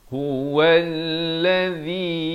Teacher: Huwallazi, waw baris fathah naik di atas lam yang bersabdu ditekankan. Huwallazi, zi hujung lidah itu keluar di antara 2 gigi itu dengan tanda panjang 4 atau 5 harakat. Huwallazi ikhfa di sini disamarkan, bukan an.